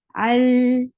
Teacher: Tawassut is a medium flow of sound. You will not stop lam abruptly, neither you will make it too long, but it will take the medium flow of sound. Al, this l sound is tawassut.